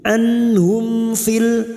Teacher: mim sukun bertemu Fa Idhar syafawi mim sukun dibaca jelas tanpa mendengung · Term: idhar safawi